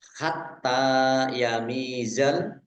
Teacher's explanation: taknya dibaca double, ada tasdidnya. Tak fathah berdiri mat tabi'i.